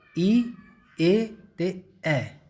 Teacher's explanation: ਪਹਿਲਾਂ ਤਾਂ ਹੈ ਅਗਲੇ ਸਵਰ ਈ, ਏ ਅਤੇ ਐ। ਜੀਭ ਨੀਚੇ ਵਾਲੇ ਦੰਦਾਂ ਦੇ ਨਾਲ ਲੱਗੇਗੀ ਤੁਹਾਡੀ